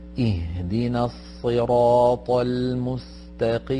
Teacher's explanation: The end of ihdina also is silent because it's a long vowel that is followed by a hamzat wasl. · So it's read very slowly, but you see that the letters, the sun lam is dropped, and so are the hamzat wasl with the long vowel